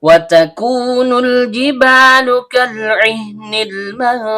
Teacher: Waw huruf bibir, ta ujung lidah bertemu dengan pangkal gigi seri atas, kaf pangkal lidah naik ke langit-langit di atasnya